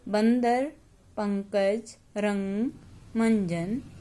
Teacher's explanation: अनुस्वार में हवा केवल नाक से निकल रही थी।